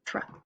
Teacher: This is one of our tricky R blends because it sort of sounds like it's saying ch.